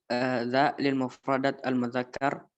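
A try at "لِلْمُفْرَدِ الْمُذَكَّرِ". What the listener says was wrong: Mana mufradat? Enggak ada mufradat. Lil mufradil mudzakkar ya.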